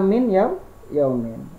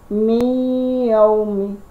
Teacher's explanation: Jadi nunnya dilebur atau dimasukkan bunyinya langsung ganti ke huruf ya. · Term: idgham bi ghunna